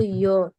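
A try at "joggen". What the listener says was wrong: জগিনি বলে সাধারণত, ইয়োগেন না সাধারণত বলে না, হ্যাঁ, জগিনি বলে। যদিও এটাকে ইয়ট বলা হয়, কিন্তু এরা জগিনি বলে।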